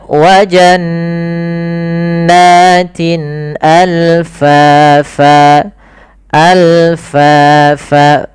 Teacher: Sedangkan al-halq berkaitan dengan huruf-huruf yang kita keluarkan daripada tenggorokan. Hamzah termasuk yang kita keluarkan daripada tenggorokan kita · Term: izhar halqi